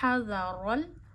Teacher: हा गले के दरमियान से अदा होता है, दरमियान से अदा करिए।